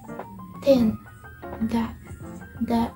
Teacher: So the tip of tongue is touches the upper teeth.